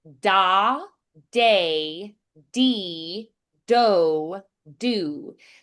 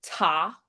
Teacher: the d is going to be a little more muted. um and dull sounding than the t